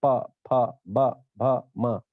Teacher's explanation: फिर जो प वर्ग है, ये सारा का सारा होठ से निकलता है